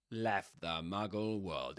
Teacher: the t in the middle again, gets dropped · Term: consonant cluster